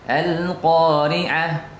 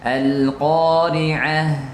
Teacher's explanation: Dan huruf ha ini mengandung sifat hamas, yaitu nafas mengalir. Kebanyakan kita al-qari'ah, tertahan suara ini salah, tertahan nafasnya.